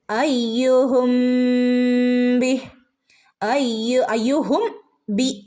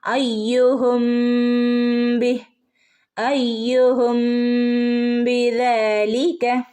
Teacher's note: ഈ മീമിനെ ബയിലേക്ക് ചേർത്ത് മണിച്ച് ഓതണം